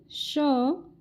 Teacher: पहले स को बोला जाएगा तालव्य स क्योंकि इसका उच्चारण स्थान तालू है